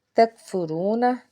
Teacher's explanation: تکفرون، کاف کو باریک پڑھیں گے، را کے اوپر پیش ہے، را کو پر پڑھیں گے، واو ساکن سے پیچھے پیش ہے، اس لیے ایک الف کے برابر کھینچ کے ادا کریں گے۔